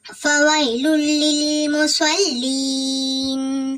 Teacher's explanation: விரைந்து ஓதணும். யா சுக்கன் பெற்று அதுக்கு முந்தின இடத்துல ஜபர் இருக்குதா, அதனால இது வாவ் லீன் விரைந்து ஓதணும்